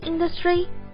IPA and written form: ˋɪndəstrɪ (Industry)